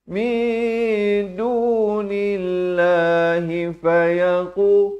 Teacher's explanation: Lafz jalalah dibacakan nipis 2 harakat.